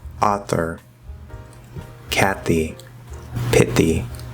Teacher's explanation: with the voiceless th we're going to replace it with a dental t because the voiceless th is voiceless and t is voiceless